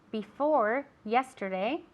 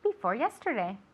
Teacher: we can link as well before yesterday okay it's an r sound and an i sound